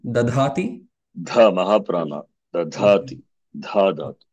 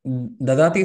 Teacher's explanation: Dha. That is Mahaprana. Dadati simply the Alpaprana